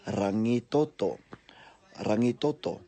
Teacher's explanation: all of those vowels in there, they're all short. There's no stressed vowels, no macrons on that in that place name.